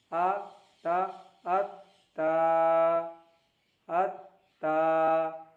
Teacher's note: ता pronounced from the tip of the tongue and the roots of the upper front teeth. Ta is pronounced from the tip of the tongue and the roots of the upper front teeth. Tip of the tongue यानी ज़बान की नोक and the roots of the upper front teeth, और ऊपर के दांतों के ऊपर का जो दांत है, ऊपर के सामने जो दो दांत है उसके जड़ से टच करना है ज़बान की नोक को। · ज़बान की नोक और ऊपर की दांतों की जड़ से उच्चारण होता है।